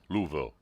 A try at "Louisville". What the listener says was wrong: No, you're saying Ville. Nobody says Ville. Louisville. No, Louisville. Louisville.